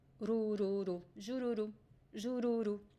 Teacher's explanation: both R's are between two vowels. So in this case, it is the flap T sound, right? It is the fricative R.